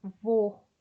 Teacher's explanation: Com o timbre fechado, a língua ela fica elevada, igual quando você fala vou. Veja que lá no fundo, próximo da garganta, sobe um pouquinho.